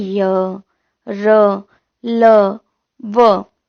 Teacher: उच्चारण में श्वास का अवरोध कम होता है, यानी जो हवा होती है, हम जो सांस ले रहे होते हैं उसमें हमें कम रुकावट होती है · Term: अंतस्थ व्यंजन